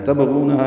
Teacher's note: تبغونہا میں با ساکن پہ قلقلہ ہے، غین پر ہے، غو واو مدہ ہے اور ہا الف مدہ ہے۔